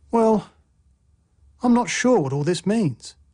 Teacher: a fall rising tone expresses uncertainty. Well, I'm not sure what all this means.